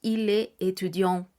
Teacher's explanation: podemos pronunciar la T para unirla a la vocal, pero nunca diremos la S del medio.